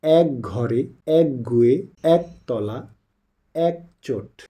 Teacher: এক যুক্ত শব্দে এ ধ্বনি বিবৃত হয়